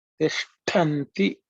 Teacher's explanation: Watch out the cerebral sha and the aspirated ta. You have to pay attention to that, and so the word gets formed.